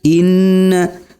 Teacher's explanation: Huruf nunnya harus didengungkan antara 2 sampai 3 harokat. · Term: gunnah